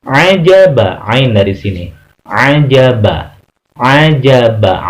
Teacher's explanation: wastol halki, tengah-tengah tenggorokan.